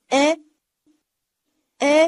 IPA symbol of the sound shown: ɑ̃